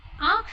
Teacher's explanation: इसमें न नहीं आता है, इसे हम सिर्फ नाक से ही ध्वनि निकालते हैं। न अक्षर का यहाँ पे कोई प्रयोग नहीं होता है। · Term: चंद्र बिंदु